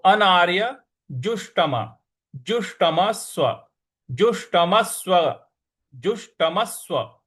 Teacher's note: अनार्य अनार्य जुष्टम जुष्टम ज पर छोटा ऊ की मात्रा और षट्कोण वाला श है तो मूर्ध्वा पे जीभ को लगाना है